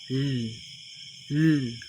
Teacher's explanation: Ang hangin lumalabas ay sa gilid sapagkat ang dulong dila ay nakadiit sa punong gilagid. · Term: Pagilid